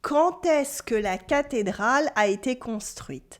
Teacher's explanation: Notice la liaison, by the way. Quand plus vowel sounds like quand t with the T sound.